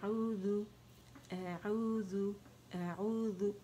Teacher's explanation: غو نہیں پڑھیں گے کہ ذال موٹا ہو جائے، باریک ہے